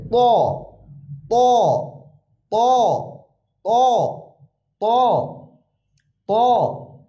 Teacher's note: ত উচ্চারণ একটু মোটা হবে, মুখটা গোল হবে।